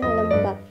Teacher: lembab diucapkan dengan lem lebih panjang daripada bab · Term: durasi